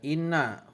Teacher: Penjelasan ayat pertama yaitu ada inna huna musayyadah karena ada huruf nun yang bertajdid, cara bacanya masuk dengan mendengung